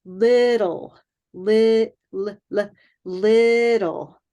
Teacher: the word little is such a beautiful word because it has the light L at the beginning and it has dark L at the end